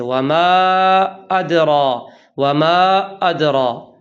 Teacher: الف مدہ کے بعد جھٹکے کسی آواز پیدا ہو جاتی ہے اور اس سے حمزہ بن جاتا ہے